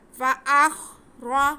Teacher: حمزہ کا زبر ہم خا کے ساتھ ملا کے پڑھیں گے، تھوڑا کھول کر کے پڑھیں گے تاکہ خا ہمارا صحیح سے ادا ہو سکے، اور آگے را پہ زبر ہے تو را کو ہم پر پڑھیں گے۔ فَأَخْرَ، آگے جیم پہ بھی زبر، ہا پہ پیش اور میم پہ زبر، لیکن میم کے ساتھ ہمارے پاس الف ہے تو یہ الف مدہ ہو گیا، الف سے پہلے زبر ہوتا ہے الف مدہ ہوتا ہے، میم کو ہم کھینچ کے پڑھیں گے۔